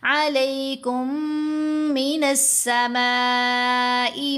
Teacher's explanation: امانتم منہ وَيُنَزِّلُ عَلَيْكُم مِّنَ السَّمَاءِ، یہ میم ساکن کا ادغام. میم ساکن کے بعد میم مشدد ہے، ساکن میم مشدد کے اندر ہی مکس ہو گئی